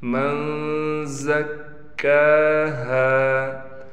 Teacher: نون پر غنہ کریں گے، زا کو صاف طور پر نکالیں گے